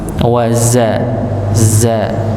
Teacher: kalau huruf za itu ujung lidah bertemu dengan gusi bagian bawah bagian dalam, gusi bagian dalam. Ujung lidah bertemu dengan gusi bagian dalam.